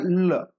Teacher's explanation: पार्श्विक है वो काय पहा पार्श्विक आहे पहा पार्श्विक म्हणजे काय जीभ असेल त्याचा जो काही पहा पुढचा भाग आहे तो या ठिकाणी मुसडेला लागतो